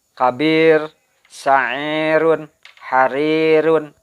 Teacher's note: jadi jangan ditebalkan membunyikan ro-nya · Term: tarkik